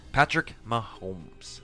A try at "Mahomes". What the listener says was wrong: It's Mahomes. No L. It sounds like you're saying an L. That sounds like an L. Mahomes.